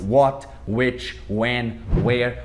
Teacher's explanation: Olha só, tudo WH e o H ninguém fala nada.